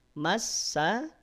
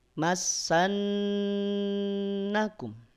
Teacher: Massa jangan ditahan, cukup ditekan. Massa, nun tahan 2 harokat.